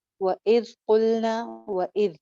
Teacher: ذال آواز چلتی بھی رہے گی لیکن سیٹی نہیں آئے گی